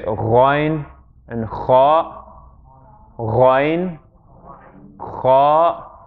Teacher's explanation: Kha and ghayn happen at the top of the throat.